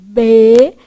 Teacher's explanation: o b é uma consoante também bilabial